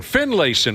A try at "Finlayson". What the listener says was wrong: Yep, Finlayson. The A is kind of silent.